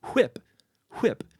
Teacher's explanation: that is with a breathy H sound at the start · a distinct voiceless labial-velar approximant